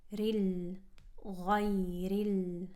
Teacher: Then we have a ra, a light ra with a kasra going into a lam with sukoon. Keep that kasra sound nice and sharp.